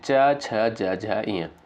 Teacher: ये तालव्य यानी तालु से उच्चारित होने वाली ध्वनियां हैं क्योंकि च वर्ग के अंतर्गत आती हैं।